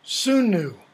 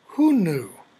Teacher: Where Sanskrit often has a s sound, Avestan sometimes has a h sound.